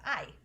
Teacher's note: Ah and E, like it can be hard to separate the fact that it's an ah and an E sound because we say it so fast all our lives. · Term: diphthongs